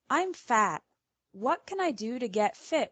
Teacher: t as a glottal stop